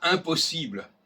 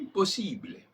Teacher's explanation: la négation n'est pas diphtonguée, n'est pas nasalisée